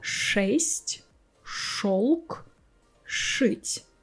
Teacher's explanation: After the letters Ж, Ш, Ц we pronounce our И, Е, Ё harder. So we replace them with their hard pair Ы, Э, О.